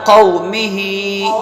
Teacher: یہاں پر نہ قاف کو کھینچنا ہے نہ میم کو. ہا کو ایک الف کے برابر کھینچنا ہے